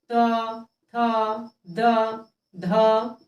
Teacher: दंत वर्ण जिसका उच्चारण दांत से होता है।